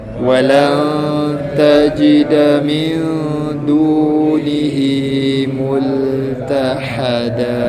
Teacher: Tahada tu kena bagi effort sikit, keluarkan bunyi ha pedas.